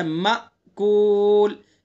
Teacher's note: حمزہ ہے، حمزہ میں جھٹکا لگائیں گے تھوڑا سا